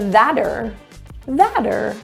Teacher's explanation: the r is reduced to ER and the t turns to a flat t and a flat T sounds like a d